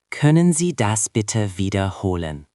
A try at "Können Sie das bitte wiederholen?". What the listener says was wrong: Just make sure the W in wiederholen sounds like a V in English, not like a W. So, wiederholen.